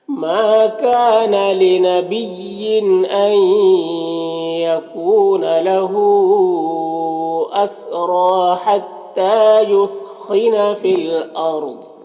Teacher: فی الارض را کو پر پڑھیں گے کیونکہ راء ساکنہ سے پہلے الف کے اوپر زبر ہے تو را کو پر پڑھیں گے